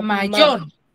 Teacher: la sílaba yor es el que tiene el acento Acento prosódico.